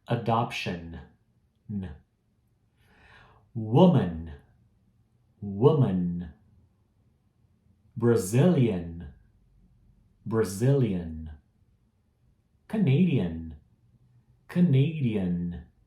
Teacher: Colocar minha língua no céu da boca para fazer o N é importante nessas palavras que terminam com N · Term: N no final